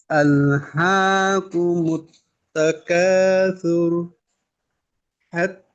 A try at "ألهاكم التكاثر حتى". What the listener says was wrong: আচ্ছা এই শেষটা রকে কিন্তু আরেকটু মোটা করতে পারলে ভালো হয়। সুর, সুর, সুর না, সুর। মুত্তাকাসুর, মুত্তাকাসুর এভাবে।